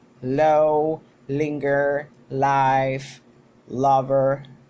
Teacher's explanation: It is produced when the tip of the tongue it touches the alveolar ridges of the back of the teeth, and we have that by its voicing it is voiced. Its manner of articulation is lateral, and by its place of articulation it is alveolar, which means it's protruded in the back of the alveolar ridges. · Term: L sound